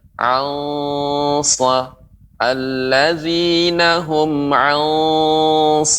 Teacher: pengucapan nun mati dengan shad itu harus ikhfa-nya tebal.